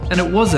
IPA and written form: æn dɪt wɒz ʌ (and it was a)